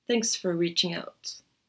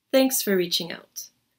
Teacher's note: Not a big, strong O sound in the word for, but short and weak for. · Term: lazy vowel sound